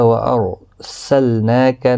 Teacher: نون کے اوپر کھڑی زبر ہے، 1 الف کی مقدار کے برابر کھینچ کر پڑھیں گے، لام ساکن کو ہلانا نہیں۔